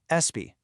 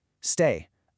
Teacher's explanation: It is so tempting to add a little vowel sound, like an A or an E, before that S. So, instead of stay, people say astay. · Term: tiny extra vowel